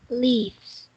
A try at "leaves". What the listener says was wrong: Okay, don't forget letter S. Say leaves.